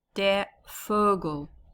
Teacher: Okay, So we have a masculine word, remember capital, and even though it's a V, it's more the F sound in German